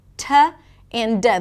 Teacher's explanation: the T and the D are produced with a tip of the tongue that touches right behind the teeth.